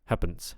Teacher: Okay, and also on happens, I have a feeling this is a Germanism here of the vowel before the double letters is getting overly reduced, which is something that would happen in German